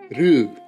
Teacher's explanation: there's just a little extra U added at the end, a kind of extension of the U to make it long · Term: long vocalic R